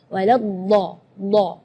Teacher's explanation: huruf dhad itu keluarnya dari pinggir lidah maupun yang kanan ataupun yang kiri atau dua-duanya.